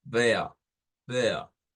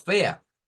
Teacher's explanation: no es la A normal, es una A diferente. Es como una A, digámosla como ronca, no es como la A así, sino vea, vea.